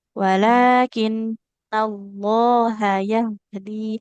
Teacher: walakinnallaha hati-hati ya H-nya jangan panjang